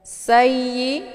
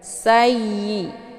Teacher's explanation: Sayyi, ada tasydid di huruf ya. Cara bacanya sinnya dimasukkan ke dalam huruf ya dengan cara ditekan. Sayyi, tidak perlu dibaca dengung.